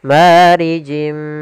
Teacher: Kita masukkan lagi tanwinnya ke huruf mim dan ditahan gunnahnya. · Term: idgham bi gunnah